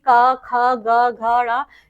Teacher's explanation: गले के भीतर भीतर के भाग से उच्चारित होने वाली ध्वनियां कंठ कहलाती हैं। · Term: कंठ ध्वनियों